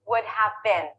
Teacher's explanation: function words are less important i take out some sounds and i take the vowel and i change it i reduce it i lower it i flatten it and i shorten it · again i'm reducing what turns into with half turns into uh i actually drop the h drop the v